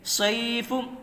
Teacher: صاد یا زبر صی، یا ساکن سے پہلے زبر ہے، اس لیے یہاں یا لین ہوگا۔ یا لین کو نرم آواز کے ساتھ جلدی پڑھیں، معروف پڑھیں، مجہول آواز سے بچیں۔